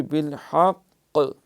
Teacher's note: وتواصوا بالحق، اگر کیونکہ یہ ساکن کریں پھر بالحق، ہم نے پڑھا تھا کہ جب کوئی حرف مشدد ہو تو وقف کرنا ہو تو وہ 2 دفعہ پڑھا جاتا ہے، کچھ دیر لگاتے ہیں۔ یہاں کیونکہ قاف ہے، قلقلہ بھی ہونا ہے، اس لیے زیادہ اہتمام کی ضرورت ہے۔